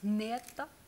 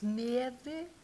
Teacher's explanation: It's an unvoiced N. So if you put your tongue in your mouth to do the N, and you breathe along the way.